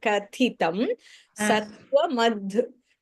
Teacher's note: Now that adbhuta, that bha is Mahapranah.